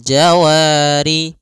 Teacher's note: ada Mad thi'i fathah bertemu Alif panjangnya dua harakat